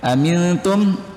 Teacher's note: mim sukun bertemu dengan huruf alif, itu hukumnya idhar syafawi, jelas di bibir.